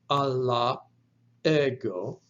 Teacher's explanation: you have to pronounce some kind of a stoppage of breath which takes place down in your throat and that is actually referred to as a glottal stop but